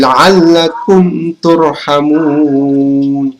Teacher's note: Karena mim sukun bertemu dengan huruf ta, maka dibaca dengan jelas. Ini adalah izhar syafawi, teman-teman.